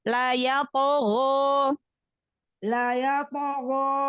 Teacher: To-nya sama go-nya angkat pangkal lidahnya karena huruf isti'la, huruf tebal.